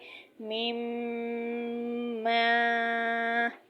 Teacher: میم ادا کرتے وقت ناک کے بانسے یعنی جڑ سے اس کی آواز نکلتی ہے، گنہ کی سی آواز نکلتی ہے، اور اسی سے حروف میم غنہ ادا ہوتا ہے۔